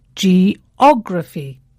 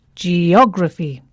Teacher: the stress falls on the third syllable from the end